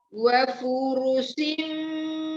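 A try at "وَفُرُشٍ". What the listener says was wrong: Wa furushim pendek ya, fu-nya pendek, ru-nya pendek. Shi ya, syam, hurufnya shin ya. Wa furushim shim gitu ya, bukan sim. Tebalkan ro-nya.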